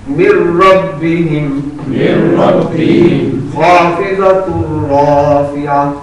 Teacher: इदगाम का माना ये है कि नून जो है वो आवाज रा में कन्वर्ट हो जाएगी, मुदगम हो जाएगी